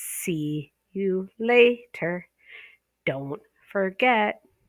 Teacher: you stress the see and the lay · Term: natural rhythm